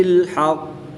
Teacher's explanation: قاف حرف مستعلیہ میں سے ہے، اس کو پوری یعنی موٹا بھی پڑھیں گے اور یہ حروف قلقلہ میں سے بھی ہے اور یہ مشدد ہے، تو یہاں پر ہم قلقلہ خوب جماؤ کے ساتھ کر کے پڑھیں گے۔